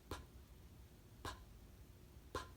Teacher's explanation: you can feel a little puff of air. Put your lips together and then puff some air.